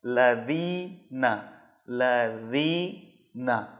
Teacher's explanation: ذال کا جو صحیح مخرج ہے کہ زبان کی نوک کو اوپر والے سامنے کے 2 دانتوں کے کنارے سے ٹچ کرنا ہے، تب ذال ادا ہوگا۔